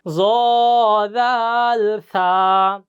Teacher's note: 13 number মাখরাজ, জিহ্বার আগা সামনের উপরের 2 দাঁতের আগার সঙ্গে লাগাইয়া